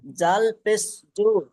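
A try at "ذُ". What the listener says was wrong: জাল ওটা ওটা জিম না এটা। আমি বলেছি জিহ্বা বার করে উপরে দাঁতের আগার সঙ্গে লাগিয়ে তিনটি অক্ষর বলতে হয়।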